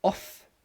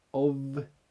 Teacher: Again, it's that voiced and unvoiced thing. Off, there's no vibration in the throat. Of, there is a vibration in the throat.